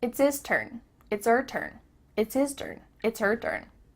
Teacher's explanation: The H at the beginning of his and her is cut off.